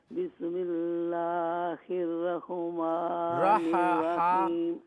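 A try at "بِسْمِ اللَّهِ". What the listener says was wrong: بسم اللہ ایک منٹ بسم اللہ ہا پہ قلقلہ نہیں ہے. بسم اللہ الرحمن صرف رحمان الرحیم.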